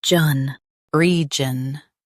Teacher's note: Stress re and keep jun light.